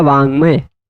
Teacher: क का उच्चारण स्थान कंठ, ङ का भी उच्चारण स्थान कंठ, इसलिए क के जगह पे हो जाएगा ये वाला ङ, बन जाता वांग्मय, बनता है ना वांग्मय।